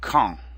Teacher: Notice that the D is silent and the AN makes our nasal sound en. So quand. It's really just two sounds.